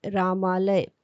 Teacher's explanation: तो इन दोनों शब्दों को मिलकर नया शब्द बनता है रामालय। अ और आ मिलकर आ बन गया है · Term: दीर्घ संधि